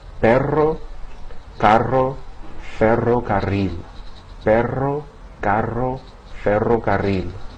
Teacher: it's pronounced as a trill, or a multiple flapping of the tip of the tongue against the ridge behind the top teeth as air passes over the tongue.